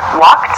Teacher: You might hear a word like walked also, which has a sort of T sound about it.